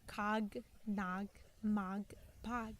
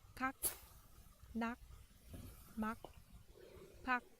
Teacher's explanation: But you drop the g sound at the end, and it just becomes kak, nak, mak, pak, ug sound.